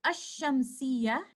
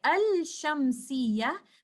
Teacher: the Sakin Lam is completely merged into letter Sheen. We do not say Al-Shamsiyah, rather we merge Sakin Lam, we do Idgham of Sakin Lam into letter Sheen. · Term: Idgham of Lam Sakina